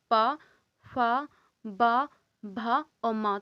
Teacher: इनका उच्चारण किस स्थान से हो रहा है, ये हो रहा है ओष्ठ से। आप बिना ओष्ठ के बोल के देखिए, नहीं बोलेगा, ठीक है। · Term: ओष्ठ व्यंजन